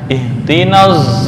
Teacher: tetapi suara Shad lebih mendominasi daripada suara Za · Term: ismam bisut